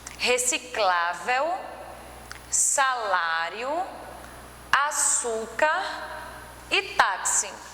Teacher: as paroxítonas eu trouxe para vocês reciclável salário açúcar e táxi então percebe que a penúltima sílaba é a tônica e acentuada